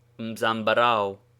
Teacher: thus a common fruit tree is called zambarao in which word the last two vowels apparently unite into a sound like that in the english word how